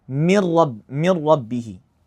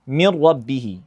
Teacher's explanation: So notice I'm pronouncing the two consecutive letters as one single letter, mir rabbihi, and that one single letter is mushaddad, mir rabbihi. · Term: merging the noon into the ra